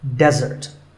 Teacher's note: Here, the stress is on the first syllable, which is de, desert.